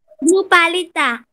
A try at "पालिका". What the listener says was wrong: पालिता नहीं, पालिका. पालिका.